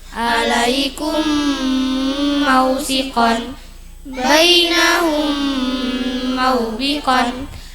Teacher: Mim sukun bertemu mim dengung tiga harakat. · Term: idgham mim mi, idgham mim